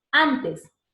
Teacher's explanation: Pero si dices antes, date cuenta que los dientes, la lengua ya no llega a rozar al alveolo, simplemente dices antes. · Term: dental